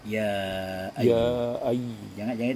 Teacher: Ketika itu maka kaidahnya berubah lagi menjadi mad jaiz munfasil, yang mana bacaannya lebih panjang daripada mad tabi'i, dibaca 4 harokat sampai 5 harokat.